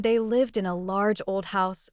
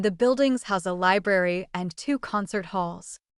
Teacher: The verb form is pronounced with a voiced sound at the end.